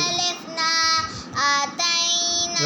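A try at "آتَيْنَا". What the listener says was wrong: غلط. آپ نے یہ کھڑی زبر کو لمبا نہیں کیا. ابھی بھی نہیں لمبا کیا.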